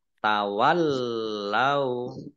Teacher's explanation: Lamnya ada tasdidnya, dibaca double.